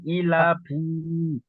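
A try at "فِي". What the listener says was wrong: ফাজের ফি টান হবে না, ফাজের ফি। না, একটু টান হবে না, হারাকাতে একদম টান হবে না। ই একালি টান দেবেন, লা একালি টান দেবেন, লাফি। খাড়া জেরটি ইজরা করেন।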